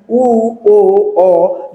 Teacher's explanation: জিহববার অবস্থানের দিক থেকে এটা পশ্চাৎ স্বরধ্বনি · উ যখন উচ্চারণ করবেন তখন দেখেন জিহবা কি পিছনের দিকে সংকুচিত হয়ে যাচ্ছে। এই পিছনের দিকে সংকুচিত হওয়ার কারণে জিহববার অবস্থানের দিক থেকে এটা কি?